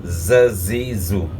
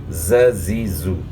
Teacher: اور اس کے بعد پھر زا ہے، تو زا جو ہے ذال سے تبدیل نہ ہو جائے. زا پڑھنی ہے، صفت صفیر ادا کرنی ہے